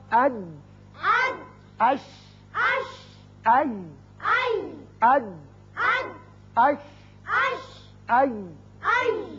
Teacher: زبان کا درمیانی حصہ جب سامنے والے تالو کے درمیانی حصے سے لگتا ہے چپکتا ہے تو یہ تینوں حروف ادا کیے جاتے ہیں